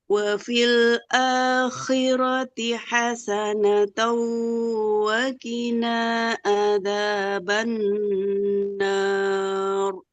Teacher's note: Rnya tebal kan jadi sukun. Didahului fathah maka harus tebal.